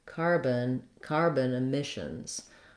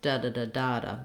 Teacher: The main stress in the phrase is on the word emissions, and it's on the mish syllable.